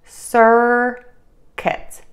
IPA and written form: ˈsɜrkət (circuit)